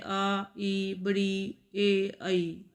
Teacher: इन स्वरों के उच्चारण में ओठ गोल नहीं होते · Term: अवता मुखी स्वर